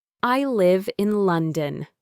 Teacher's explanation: The pitch goes down on London. This tells the listener that I have finished my thought.